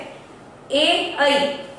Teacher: तालु से उच्चारण होने वाले वर्ण है ए ऐ